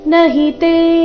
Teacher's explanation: ನಹಿತೆ ತೆ ದೀರ್ಘ ನ ಮತ್ತೆ ಹಿ ಎರಡು ರಸ್ವ